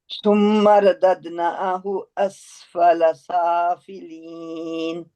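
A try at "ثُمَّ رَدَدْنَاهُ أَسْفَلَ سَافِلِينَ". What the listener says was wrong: अच्छा जी सिस्टर, आपने सुम्मा पे वो गुन्ना छोड़ दिया, इसको दोबारा करें। हाँ, मैंने कहा था इसको छोड़ना ही नहीं है, आपने कहा अच्छा मैं इसको छोड़ के दिखाती हूँ।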